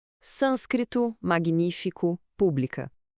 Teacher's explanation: a força da pronúncia cai sempre na antipenúltima sílaba, né? E o assento tá lá firme e forte para marcar. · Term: proparoxítonas